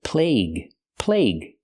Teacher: Use the long A sound like day and say. Plague. And the UE is silent.